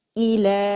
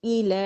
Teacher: آواز اوپر جائے گی، ایلے نہیں ہوگا